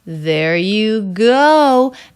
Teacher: you go the stress is all going up towards the peak the energy peaks out on the word go that has the oh diphthong you will need some lip rounding for that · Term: peak of stress